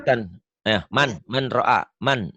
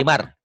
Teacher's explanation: Nun mati atau tanwin ketemu ro idgham bila gunnah.